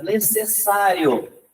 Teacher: Necessário é a segunda sílaba. Então, ela é uma paroxítona.